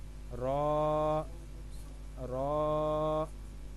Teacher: जुबान की नोक और मुकाबिल के तालू से अदा होता है